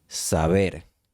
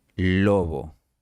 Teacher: la pronunciación de B entre vocales se volvió más suave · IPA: [sa'βeɾ]